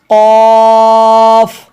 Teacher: ज़बान की जड़ और तालों के नरम हिस्से से अदा होता है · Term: हरूफ लहविया